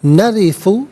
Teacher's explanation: انا علیحدہ، نا علیحدہ ملا کر پڑھیں گے، انا نحنو نرثو، را کے نیچے زیر ہے، را کو باریک کر کے پڑھا جائے گا، اور ثا پر پیش ہے، اسے الارض کی لام ساکن کے ساتھ ملائیں گے، درمیان میں سے الف نی حمزہ کو حذف کیا جائے گا، اور ارضا میں را ساکن ما قبل حمزہ پر زبر ہے، را ساکن کو پر کر کے پڑھیں گے۔